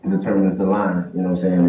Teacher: he doesn't say line, he says lan